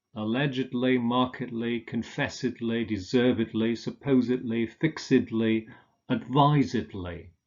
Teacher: These are pronounced allegedly and markedly. So if the main stress falls on the syllable that precedes the ed-ly ending, we say idly